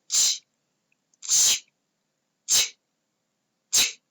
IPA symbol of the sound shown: tʃ